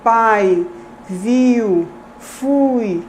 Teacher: Observe que a língua se movimenta na produção desses segmentos vocálicos do A para o I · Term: ditongo